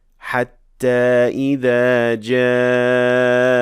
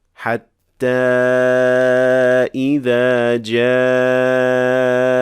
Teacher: So we can say حتى إذا جاء without extending the optional med for 4 counts and only pronouncing the basic natural med. But we can also say حتى إذا جاء with extending the optional med for 4 counts.